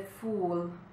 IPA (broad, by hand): fuːl